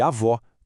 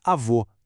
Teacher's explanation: comparando o som aberto de avó com o agudo e o som fechado de avô com o circunflexo. O acento muda tudo.